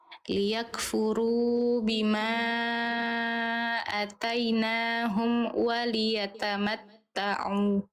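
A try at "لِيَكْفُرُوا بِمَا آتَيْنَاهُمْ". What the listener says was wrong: Dua harakat. Dua ya. Heeh. Tadi Bunda baca satu harakat.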